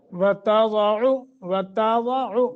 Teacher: تا باریک ہو، ضاد موٹا، وتضع، ایسے کر کے عین کو پڑھنا ہے۔